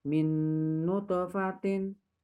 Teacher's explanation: Kemudian di ayat 19 itu terdapat hukum bacaan idgham biguna karena nun sukun bertemu dengan nun itu dibaca dengan mendengung, ada dengungnya